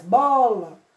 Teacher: Bola, olha, a boca chega a abrir mais, bola, no bó, né? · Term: sílaba tônica